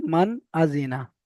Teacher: নুন সাকিনকে বিনা গুণনায় জাহির করে তাড়াতাড়ি পড়তে হবে